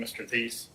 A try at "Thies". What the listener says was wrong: Tease, the H is silent.